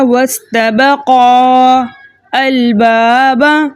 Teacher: اسے جائز کرنے کے لیے اجتماعی ساکنین فی کلمتین کے پہلے طریقے کے مطابق ہم حروف مدہ کو حذف کر دیں گے۔ جب ہم نے الف مدہ کو حذف کر دیا تو یہاں پر جو ہے قاف کو ہم لام کے ساتھ ملا کے پڑھیں گے۔ الف مدہ حذف ہو گیا، حمزۃ الوصل جو ہے درمیانی کلام میں آنے کی وجہ سے ختم ہو گیا۔ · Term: حروف مدہ حذف